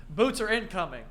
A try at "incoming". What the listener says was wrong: When you said incoming, like they're in Alan coming.